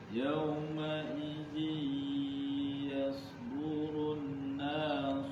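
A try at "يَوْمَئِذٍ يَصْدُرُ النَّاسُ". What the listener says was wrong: Run sama lamanya. Dengung. Yasdurun nasu.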